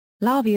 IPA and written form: ˈlɑrviː (larvae)